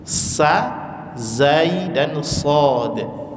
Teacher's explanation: ujung lidah ditempelkan ke tempat pertama tumbuh gigi seri bawah. Jadi posisi ujung lidahnya di bawah. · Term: makhrajnya